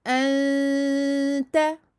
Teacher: le son doit sortir de deux endroits et de la bouche et du nez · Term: dissimulation